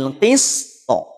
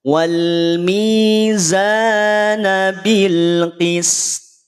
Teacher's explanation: Huruf to mesti tetap dibunyikan dalam kondisi sukun. Berarti huruf to-nya memantul. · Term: qalqalahnya